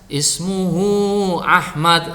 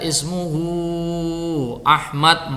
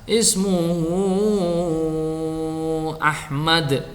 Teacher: Ada yang ismuhu Ahmad hanya dibaca 2 harokat, ada yang dibaca ismuhu Ahmad 4 harokat, ada yang dibaca 6 harokat, ismuhu Ahmad.